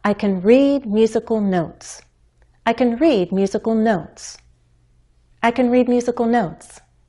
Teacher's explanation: My pitch changes on the word notes. That's the final content word, which makes it the focus word of the sentence.